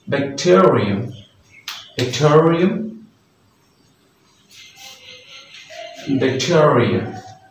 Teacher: This stress will be on the second syllable of the word